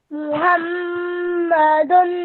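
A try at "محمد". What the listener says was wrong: Maybe not that long at the end, just 2 seconds is enough.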